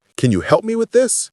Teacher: Voice goes up on this.